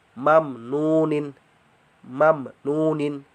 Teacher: mim ketemu nun, mamnunin, mamnunin ya, jelas tanpa disertai dengung